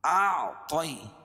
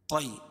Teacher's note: طا کو موٹا پڑھیں گے کیونکہ حروف مستعلیہ میں سے ہے، طی، اور یا ساکن سے پہلے طا کے اوپر زبر ہے تو یا لین ہوگا، اس کو نرم آواز کے ساتھ جلدی پڑھیں گے۔